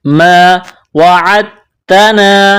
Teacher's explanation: ما وعدتنا دال ساکن ہے، دال ساکن کے بعد تا ہے، تا کے اوپر تشدید ہے تو دال کو نہیں پڑھیں گے، عین کو تا کے ساتھ ملانا ہے.